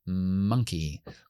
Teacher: cuando yo hago la M, pues obstruyo con los labios. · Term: nasales